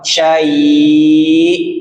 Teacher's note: Tenggorokan bawah. Hamzah kan tenggorokan bawah. Ditekan, masukkan ke tenggorokan bawah.